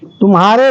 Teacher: इस तुम्हारे में तू के ऊपर ज्यादा बल नहीं पड़ने के कारण इसकी गणना संयुक्ताक्षर से पूर्व का वर्ण होते हुए भी लघु ही में होती है